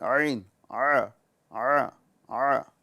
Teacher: عین کی جو آواز ہے یہ حلق کے بیچ والے حصے سے آتی ہیں